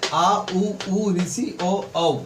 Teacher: ये क्या हमारे पीछे वाले भाग से आते हैं, मतलब पश्च भाग से आते हैं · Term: पश्च स्वर